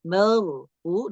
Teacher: Tidak dibaca merfu, tapi merfu. Dorong ro-nya agak sedikit ke belakang supaya ketebalannya bertambah. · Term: ro sukun